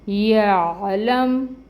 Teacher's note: لام کے اوپر فتحہ ہے، 1 کاؤنٹ، اور اس کو میم کے ساتھ ملائیں گے، لم، اور پھر یا ہے، یا کے اوپر فتحہ 1 کاؤنٹ، عین کو وسط حلق سے نکالیں گے، پھر لام ہے، فتحہ 1 کاؤنٹ، میم ساکن ہے، یعلم۔